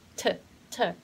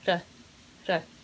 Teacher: for the T in the States, it's not hard T like T, T, but it becomes softened. So it's gonna sound like R, R. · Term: tap T